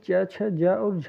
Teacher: स्पर्श संघर्षी व्यंजन ये च, छ, ज और झ को कहा जाता है।